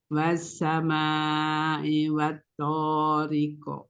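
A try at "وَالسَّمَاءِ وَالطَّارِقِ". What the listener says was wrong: Tapi tadi itu kafnya lebih ke kaf ya. Yang coba lebih ke belakang sedikit, makhrajnya kaf. Pangkal lidah belakang bertemu langit-langit yang lunak. Sehingga ada o, o, o. Ringan saja.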